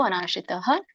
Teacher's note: ಭಗವಾನುವಾಚ ಭಗವಂತ ಹೇಳಿದರು ಅನಾಶ್ರಿತಹ ಇಲ್ಲಿ ಮತ್ತೆ ವಿಸರ್ಗ ಇದೆ ಆದಮೇಲೆ ಸೋ ಹಾಗಾಗಿ ಅಲ್ಪವಾಗಿ ನಾವು ಹ ಉಚ್ಚಾರಣೆ ಮಾಡಬೇಕು